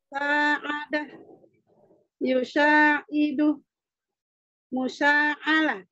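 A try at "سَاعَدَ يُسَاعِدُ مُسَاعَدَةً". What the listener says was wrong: Jadi dari mana ada lamnya? Ulang. Sa'ada. Sa'ada.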